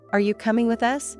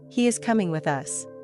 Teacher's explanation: your eyebrows might raise, your voice goes up at the end, and your mouth opens differently than in a statement like, "He is coming with us." You can also practice entire dialogues or short monologues in front of the mirror.